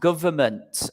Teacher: we don't pronounce the N, okay, in government